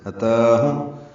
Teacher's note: اتاہم حاق سے حرف سے نکالیں گے اور میم ساکن پہ اظہار شفوی ہے